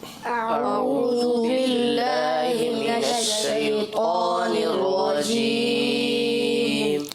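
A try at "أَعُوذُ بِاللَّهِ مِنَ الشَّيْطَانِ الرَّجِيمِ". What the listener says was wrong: اچھا اس کو دیکھیے رجیم پڑھنا ہے، صحیح نا؟ پچھلے سلسلے میں ہم نے کہا تھا نا جیم کو چے پڑھ دیتے ہیں، رجیم، تو رجیم پڑھیں گے۔ کیسے پڑھیں گے؟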